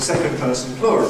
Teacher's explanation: Notice the reduction of the accent on person. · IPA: <ˌsecond ₒperson ˈplural>